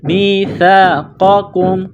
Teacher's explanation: سا کو پڑھتے وقت زبان باہر نکالیں گے۔ میثاقکم، قاف کو موٹا کرنا ہے، دوسرے کاف کو باریک کرنا ہے، میم کے ساتھ ملانا ہے۔